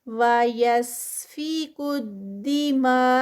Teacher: وَيَسْفِكُ الدِّمَاءَ، دماغ کے ساتھ جو مد ہے مد متصل ہے، جڑی ہوئی ہے، کنیکٹڈ ہے یہاں پر کیونکہ اس کے فوراً بعد حمزہ ہے، اسی ورڈ کے اندر آگے حمزہ آ رہا ہے، تو 4 کاؤنٹس کا اسٹریچ